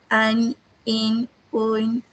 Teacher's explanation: Suara hurufnya keluar dari pangkal hidung dan menghasilkan bunyi dengur. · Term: nun sakinah